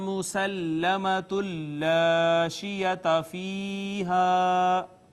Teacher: اور لام حروف ادغام میں سے تھا، ما قبل نون تنوین، لام نے ما قبل نون تنوین کو اپنے اندر ضم کر لیا، ادغام بلا غنہ